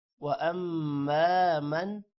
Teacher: نون پر غنہ نہیں ہوگا کیونکہ آگے حروف حلقی آ رہا ہے، خا حروف حلقی ہے جس کی وجہ سے من پر غنہ نہیں ہوگا۔